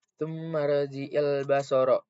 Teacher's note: Nah, pada ayat basara terdapat alif lam qamariyah karena ada alif lam yang bertemu dengan huruf ba yaitu salah satu huruf qamariyah yaitu qamariyah ba. Cara bacanya alif lamnya terbaca atau dibaca jelas.